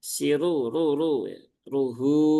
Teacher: ro yang dia berharakat dommah, maka dia punya sifat aridah, yaitu sifat tafhim atau sifat yang dibaca dengan cara menebal